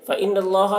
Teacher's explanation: نون مشدد، نون میں غنہ کریں گے